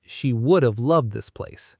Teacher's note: The word have shrinks to just a soft v.